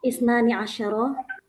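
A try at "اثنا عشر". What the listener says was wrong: Isna, nggak pakai ini ya, langsung aja. Isna asyara gitu ya.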